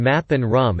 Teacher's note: Features of the bilabial nasal: its manner of articulation is occlusive, which means it is produced by obstructing airflow in the vocal tract because the consonant is also nasal. The blocked airflow is redirected through the nose. Its place of articulation is bilabial, which means it is articulated with both lips.